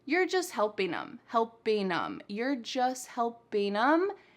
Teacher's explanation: the word them in fast conversation often drops the th and we just say um, you're just helping them.